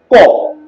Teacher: ক হলো কণ্ঠধ্বনি, ক হলো অঘোষ ধ্বনি, ক হলো আবার অল্প প্রাণ ধ্বনি